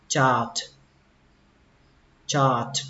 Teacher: Âm A nó kéo dài ra một chút tại vì ở đây nó có âm R các bạn, nên nó kéo dài ra một chút, đọc là chart.